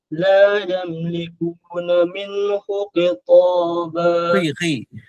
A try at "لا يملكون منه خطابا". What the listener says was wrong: Tak dengar bunyi khi. Nanti bagi balik dah. Minhu khitaba. Khi.